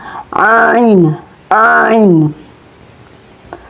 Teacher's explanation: Cara melafalkan ngain itu keluar dari bagian ujung tenggorokan tepatnya dari persentuhan antara bagian belakang lidah. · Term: huruf ain